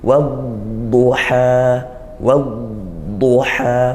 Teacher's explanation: Huruf dhad itu dari tepi lidah atau sisi lidah, ya. Maka dipanjangkan bunyi alirannya itu yang dia juga rikhwa, ya.